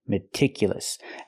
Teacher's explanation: I cannot use the long E like green beans. I need a short I.